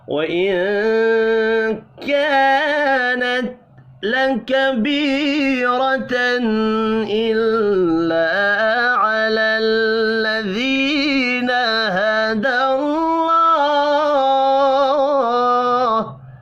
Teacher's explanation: نون ساکن کے بعد کاف اخفاء حقیقی ہوگا